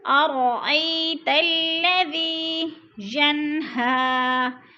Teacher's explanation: ین پہ اظہار ہو رہا ہے، نون ساکن کے بعد ہا حرف ہلکی میں سے آ رہا ہے، اظہار غنہ نہیں کریں گے، ظاہر کر کے پڑھیں گے لفظ کو